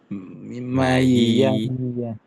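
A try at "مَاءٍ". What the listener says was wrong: panjang Mas, maaf. Mayi, langsung masuk.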